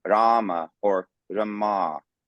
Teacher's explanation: so that A is long, and of course I'm still emphasizing Rama. So the first A is longer in time